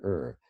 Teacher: er is actually a central liquid so you pull your tongue into the center of your mouth and then the sound comes all around